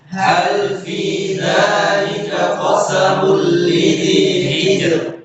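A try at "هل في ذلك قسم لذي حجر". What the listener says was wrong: Ya, jangan hijr, itu tebal. Hijr tebal, hijr tipis.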